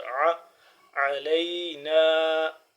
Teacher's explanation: عین حلق کے درمیانی حصے سے تھوڑا سا کھچاؤ پیدا کر کے، زور لگا کے